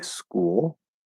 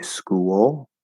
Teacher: you can say school with an L-colored oo. You can say school with a small w between them.